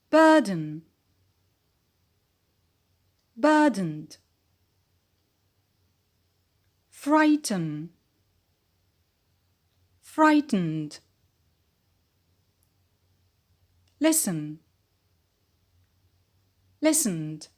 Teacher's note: a consonant like L or M or N stands as the peak instead of the E, which is the schwa, which is dropped